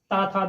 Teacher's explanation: ता था दा बोलेंगे तो जीभ दांत से टकराएगी।